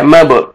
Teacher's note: میم کو با کے ساتھ ملائیں گے اور قلقلہ کریں گے. با حروف قلقلہ میں سے ہے.